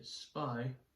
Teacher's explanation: When you say spy, there's not as much breath hitting your hand. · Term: soft P